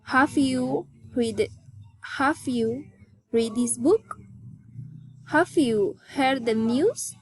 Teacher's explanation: General question. Rising intonation.